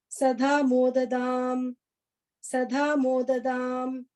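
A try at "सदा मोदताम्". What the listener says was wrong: Modatam. Okay, modatam. First ta. Sada modatam.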